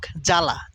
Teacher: শুরুতে যদি বফলা থাকে সেটা উচ্চারিত হয় না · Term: আদ্য বফলা, আদ্য বফলা অনুচ্চারিত থাকে